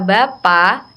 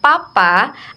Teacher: perbedaan antara B bersuara dan P tidak bersuara. Dalam kata Bapak dan Papa akan mengubah maknanya dalam pembelajaran bahasa.